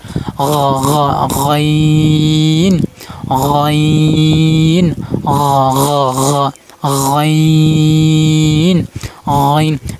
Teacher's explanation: গইন হরফ উচ্চারণ স্থান গলার শেষ অংশ থেকে উচ্চারণ হবে, মানে হলকের শেষ ভাগ থেকে উচ্চারণ হবে গইন গ।